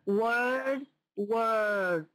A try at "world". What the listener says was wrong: Okay, so I'm guessing what's going on here is your tongue isn't getting up there behind your front teeth.